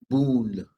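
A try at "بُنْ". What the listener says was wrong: So it's not boon, it's just bun. Bun. Yeah, there's no extension. There's no boo, yeah, it's just bun.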